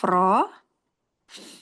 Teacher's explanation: Ro ujung lidah bertemu gigi gusi atas